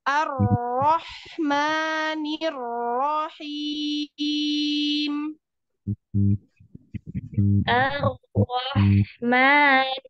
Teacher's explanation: R tasdid itu enggak boleh cepat-cepat tahan dulu